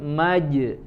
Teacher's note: pantulkan dan tidak pecah suaranya jadi bukan maj ya langsung dipantulkan tanpa pecah suaranya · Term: jim sukun